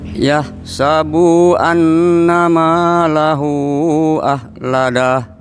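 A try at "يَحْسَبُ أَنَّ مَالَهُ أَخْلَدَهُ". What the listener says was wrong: Sekali lagi Bapak, bunya pendek saja. Yahsabu annama.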